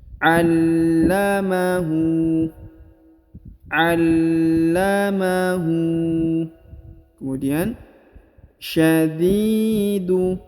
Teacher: Huruf di dipanjangkan 2 harokat ya, karena di depannya terdapat huruf ya sukun atau ya mati. Allamahu.